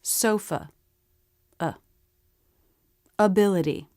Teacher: the schwa will always be really fast and low in pitch.